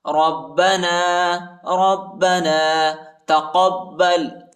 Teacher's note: با کو شدت کے ساتھ سختی کے ساتھ پڑھیں گے